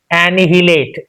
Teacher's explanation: There are at least 4 to 5 sounds for syllables being present in this particular word. Now we have to stress on this na sound, then it will become clear. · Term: stress mark